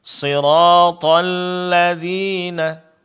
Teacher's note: di sini lamnya tipis, Pak. Jangan terpengaruh oleh tebal huruf th sebelumnya.